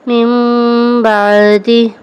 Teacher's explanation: نون ساکن کے بعد با ہے تو ہم نے اس کو میم سے بدل کر اخفاء کیا، یعنی اقلاب کا قاعدہ ہم نے یہاں پر یوز کیا کہ ہم نون ساکن اور تنوین کو میم سے بدل کر اخفاء کریں گے یعنی غنہ کریں گے، ٹھیک ہے۔